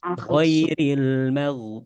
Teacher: huruf ghain di adnal halqi. adnal halqi ataupun ujung tenggorokan ya.